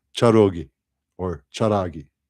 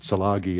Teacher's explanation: There were bands of Cherokee who used the ra instead of the la.